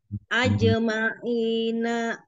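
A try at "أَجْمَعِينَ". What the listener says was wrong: nanya jangan ada hamzah, ya ajemaina,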